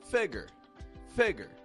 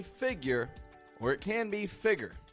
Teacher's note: both are good as long as it starts strong and then drops flat on the ending